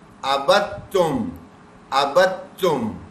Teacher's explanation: کیونکہ تا کے اوپر تشدید آ گئی. اب یہ تا کی تشدید پچھلے دال کو بیچ سے ہٹا دے گی، تو ہم با زبر کو تا تشدید سے ملا دیں گے